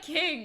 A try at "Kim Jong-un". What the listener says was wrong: It's Kim. Wait, you were actually saying king?